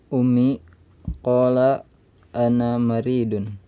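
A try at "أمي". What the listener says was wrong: Ummi, ya, mimnya ada tasydidnya.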